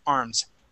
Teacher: So even though it may sound like it's a S sound, it's not, it's a Z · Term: voiced S